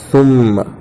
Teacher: یہاں میم پر تشدید ہے اس لیے میم میں گنہ ہوگا۔ ناک میں آواز روکنے کو گنہ کہتے ہیں اور گنہ کی مقدار 1 الف کے برابر ہے۔ سا میم پہ ثم، میم زبر ما، میم پر زبر کی حرکت ہے، حرکت کو جلدی پڑھے، تھوڑا بھی نہ کھینچیں۔